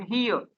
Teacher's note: ડુઈંગ, ડુ ઉપર ભાર પાડવાનો છે, ડુઈંગ. હિયર, હી ઉપર ભાર પાડવાનો છે